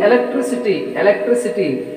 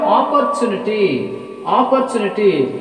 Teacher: when words ended with the suffix ity suffix ity stress is on anti-penultimate syllable that is third syllable from the last